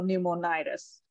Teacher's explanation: the stress is on the second to last syllable